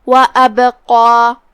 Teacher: یہاں با کا حکم ہے قلقلہ. قلقلہ کا معنی ہے حرف ساکن کو ہلانا، تو ہم با کو ہلاتے ہوئے یہ کلمہ کو پڑھیں گے